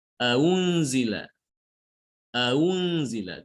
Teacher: hamzah yang kedua itu tidak dibaca hamzah, tapi dibaca antara hamzah dengan wawu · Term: tashil